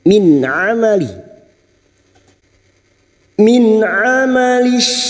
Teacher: nun sukun bertemu Ain izhar halq nun sukun dibaca jelas tanpa mendengung